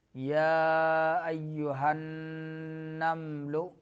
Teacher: نمل میں نون میں غنہ زمانی اور میم میں غنہ انی